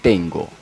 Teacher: n es velar por efecto de la g